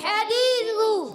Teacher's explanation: حدیثو میں ہا کی ادائیگی حلق کے درمیان والے حصے سے